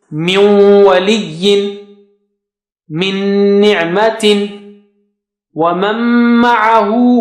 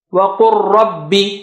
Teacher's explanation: all of them representing the merger. Some of them with gunna and the last one without gunna.